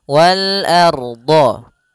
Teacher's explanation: A tipis, ro-nya tebal.